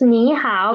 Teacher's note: we will change the first third tone into second